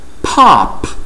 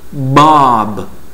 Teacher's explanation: Porque em uma nós temos a vibração, nós não temos a vibração pop, e na outra nós temos a vibração Bob. Se lembre, eu não estou falando da vogal O no meio, eu estou falando apenas do som do P e do B.